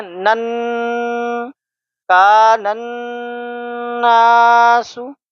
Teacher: جس نون یا میم کے اوپر تشدید ہو اس نون اور میم کو ہم غنہ کے ساتھ پڑھتے ہیں۔ ایک الف کے برابر غنہ ہم یہاں پہ کریں گے